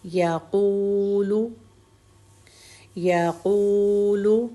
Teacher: قوف کو پیش کے ساتھ واو بھی ہے، اس لیے اب ہم یہاں 2 حرکت کریں گے